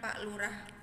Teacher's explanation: Pada kata pak terjadi kesalahan penghilangan fonem konsonan k pada akhir kata.